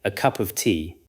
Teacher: The meaning is carried mainly by cup and tea. The word of becomes a small connection. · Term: weak forms